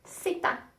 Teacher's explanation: the Z always sounds like an S. Sita. It's never Z. It's never voiced.